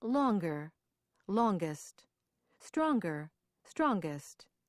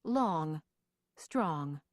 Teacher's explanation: in words ending in ng that make comparisons by adding ER or EST the G is also pronounced